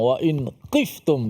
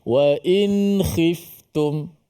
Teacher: Kha yang berbaris di bawah jangan ditukarkan kepada qaf.